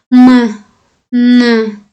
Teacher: Bular burunda bu tovushlarni aytayotganimizda burundan chiqadi-da havo. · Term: burun tovushlari